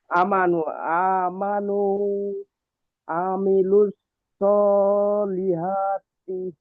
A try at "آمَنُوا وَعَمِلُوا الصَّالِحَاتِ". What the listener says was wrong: ওয়াও ছেড়ে গেল। ওয়া আমিলুস সলিহাতি।